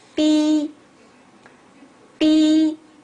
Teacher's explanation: The first tone is flat. It doesn't go up or go down like the others do. · The second tone starts from a lower pitch and it goes up to a higher pitch to the level where the first tone is.